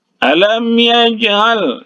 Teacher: dipantulkan sedikit saja karena huruf qalqalah ini berada di tengah kata. Kalau dia berada di tengah kata, maka hukumnya qalqalah sughra.